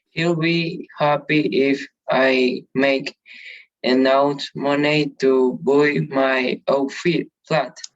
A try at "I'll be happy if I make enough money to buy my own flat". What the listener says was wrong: The correct pronunciation is I'll, not ill. I'll. And the correct pronunciation of this word is no buy, is buy. So I'll be happy if I make enough money to buy my own flat.